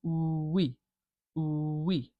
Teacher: Like you can go ooh wee, and that e, that sort of little w will appear between those two vowel sounds. And you can practice making the ooh shorter and shorter until it's just a little baby ooh, and you're just saying we, we. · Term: w sound